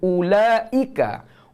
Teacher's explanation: Huruf hamzah pangkal halkum. Pastikan suara tertahan.